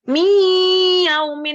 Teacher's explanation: membacanya itu dengan dengung kalau secara ketukannya tiga ketukan Mi Gitu ya Ada dengungnya ada suara dengungnya miaumin jadi tiga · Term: bighunah, bi ghunnah